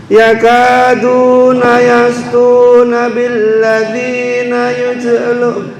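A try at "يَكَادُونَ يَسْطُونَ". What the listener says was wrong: Ya, betul.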